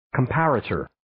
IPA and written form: 'kɑːmpə,reɪtər (Comparator)